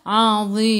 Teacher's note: Dha hujung lidah keluar sikit sahaja pada gigi depan.